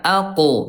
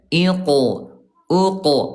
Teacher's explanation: Huruf qf ayah bunda, dia syiddah, dia kuat, dan juga qalqalah mantul ya